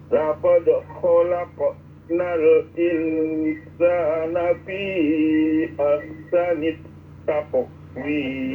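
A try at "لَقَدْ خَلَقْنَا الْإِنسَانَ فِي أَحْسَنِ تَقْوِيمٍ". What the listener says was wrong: nah, jangan terputus-putus disambung ya. Laqad khalaqnal insana fi ahsani taqwim.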